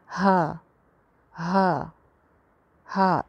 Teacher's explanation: ये वाला हा भी हलक ही से निकलता है, लेकिन हलक के सबसे नीचे वाले हिस्से से निकलता है जो कि सीने से करीब है। तो इसमें ना आवाज़ अगर हम ऊपर वाले हलक की तरफ लेके आने की कोशिश करें या इसको कॉन्शियसली निकालें तो फिर ये इसमें गड़बड़ का इम्कान है, वरना नॉर्मली ये लोगों की ठीक ही होती है।